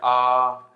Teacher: इतना मान लो इतना बड़ा है तो आधा खुलेगा ठीक है विवृत स्वर होता है तो पूरा मुंह खुलता है